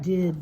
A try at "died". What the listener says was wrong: Are you trying to say died? How will you make your I long? I.